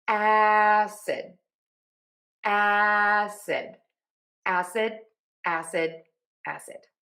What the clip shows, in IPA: ˈæsɪd